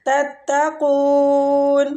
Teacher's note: تتقون قاف مستعلیہ ہے مد عارض للسکون ہو رہا ہے